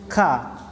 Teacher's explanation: cara membaca ka, nafasnya berhembus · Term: hamas